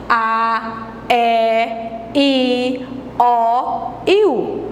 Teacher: não sai com obstáculo nem do dente nem da língua nem encostando a língua no céu da boca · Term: as vogais